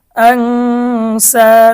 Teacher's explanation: নুন সাকিনের পরে ইকফার হরফ সিন এসেছে, গুন্না সহ পড়তে হবে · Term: ইকফার গুন্না